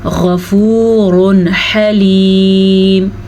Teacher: गैन को आपने पुर पढ़ना है, गैन हुरूफ़ मुस्तालिया में से है